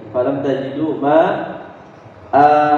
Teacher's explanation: Kalau berhenti dia dibaca hamzahnya 2 harokat.